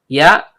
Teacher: Ya, tengah lidah naik memantul ke langit-langit